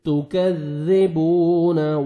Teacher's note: تا کو باریک پڑھیں گے, کاف کو بھی باریک پڑھیں گے, اور ذال کو نرمی سے ادا کریں گے. تکذی نہیں پڑھیں گے, تکذبون.